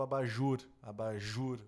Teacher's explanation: a sílaba tônica sendo a última